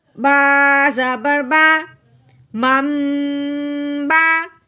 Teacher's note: میم کو میم کے ساتھ ملاتے ہوئے غنہ کرنا ہے